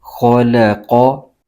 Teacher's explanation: खौ और क़ाफ ये दो हर्फ हरूफ मुस्तआलिया में से हैं। इन दोनों हर्फों को पुर यानी मोटा करके पढ़ना ज़रूरी है। तो खौ क़ाफ को मोटा करके पढ़ेंगे।